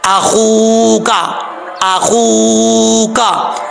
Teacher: और वाव हुरूफ वाव जो है ये मद्दा है, वाव साकिन से पहले पेश हो तो वाव मद्दा होता है। एक अलिफ की मिकदार इसको लंबा करके पढ़ेंगे।